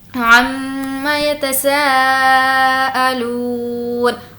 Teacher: عما میم پر تشدید ہے اسی لیے ہم یہاں پر غنہ کریں گے۔ عما سا کو کھینچ کر پڑھیں گے کیونکہ یہاں پر مد ہے۔